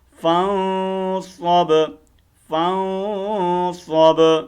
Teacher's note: صاد کو با کے اوپر کھینچ کر ماریں گے اور با کی آواز کو ہم نے ہلانا ہے، ٹھیک ہے، کلکلا کرنا، یہ حروف کلکلا میں سے ہے، ٹھیک ہے.